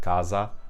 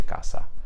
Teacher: We can also see this happening in Italian, but really only in the southern region, where a single s between two vowels in the south is pronounced as z, like if I have a word like casa. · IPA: [kaza]